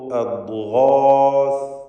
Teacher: ദ്വാദ് പരിശീലിക്കുവാൻ പറ്റിയ ഒരു പദം കൂടിയാണ്. ദ്വാദിന് സുക്കൂൻ, നാവിൻ്റെ സൈഡിൽ നിന്നാണ് ഉച്ചരിക്കേണ്ടത്